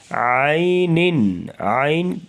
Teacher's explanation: من، نون ساکن آ گیا، اس کے بعد عین حروف حلقیہ، تو اظہار کر کے پڑھیں گے، یعنی جلدی سے. عین، عین جو یا ہے، یا لین ہے، اسے نرمی سے پڑھیں گے اور عین کی آواز گلے سے نکالیں گے